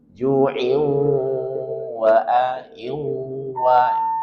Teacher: Baik, perhatikan sebagian besar belum mendengungkan di sini ketika sambung. Min ju'in, dia harus gunnah. Maka ke atas, ke rongga hidung.